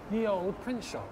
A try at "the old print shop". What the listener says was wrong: It's not ye, it's the. That's a form. It's a, oh. it's a the Y is an old English character for th.